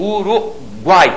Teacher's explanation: aqueles três sons vocálicos apareceram na mesma sílaba. Eu não posso dividir aquilo. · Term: tritongo